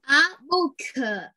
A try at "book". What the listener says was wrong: Đừng, con đừng có đọc là booker. Con không có đọc là booker. Nhưng mà book. Book. Cái âm k. Đó book. Là nó book. Chứ con đừng có đọc là booker nghe.